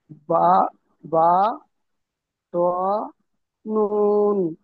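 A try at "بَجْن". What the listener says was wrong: আচ্ছা আপনি বাটা একটা কেটে বলছেন, জটা আলাদা করে বলছেন, নুনটা আলাদা বলছেন। কিরকম বলতে হবে বলুন তো? বা, জ, নুন।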